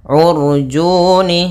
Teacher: pada lafal u ketemu ro sukun, maka di sini ro-nya ro tafkhim, ro tebal. Kemudian juni ada mad tabi'i, yaitu dhammah bertemu waw yang sukun atau tidak berharakat.